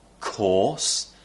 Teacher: course the r is replaced with an or sound